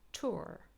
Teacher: in British English we do not pronounce this r, but in American English we do, which is why we have the r sound here, tour, and it sounds different. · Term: rhotic accent